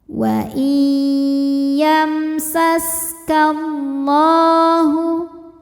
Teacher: Lam jalalah dibunyikan secara tafkhim karena harokat huruf sebelumnya fathah. Cara bacanya dibunyikan dengan tebal dengan cara mengangkat pangkal lidah kita.